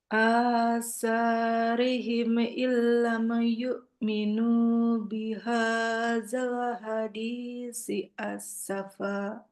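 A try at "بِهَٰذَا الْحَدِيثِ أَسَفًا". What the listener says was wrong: Nah, yang sa gini tuh, keluarin lidahnya. Hadisi, hadisi, gitu. Zalnya juga, zal yang bentuknya begini, dikeluarin lidahnya. Bihadzal hadisi asafa, dikeluarin. Beda dia kan bunyi yang si dengan sin. Kalau yang si harus keluar lidah. Kalau yang sin, ini baru yang sin kayak kita sin biasa.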